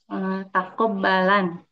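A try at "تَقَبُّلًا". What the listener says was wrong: Taqabbu. Dhamma sebelum akhir.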